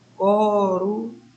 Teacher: Quem foi que veio com mais intensidade? O ru.